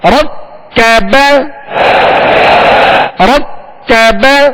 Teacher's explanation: را کو پر کریں گے کاف کو باریک